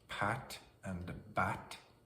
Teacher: same mouth shape, same airflow except for voicing